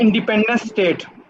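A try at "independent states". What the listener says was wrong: स्टेट्स। आखिर वाले एस पे कंसंट्रेट कर दें सारा, इंडिपेंडेंट स्टेट्स। स्टेट नहीं है,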